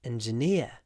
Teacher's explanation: interestingly the stress is at the end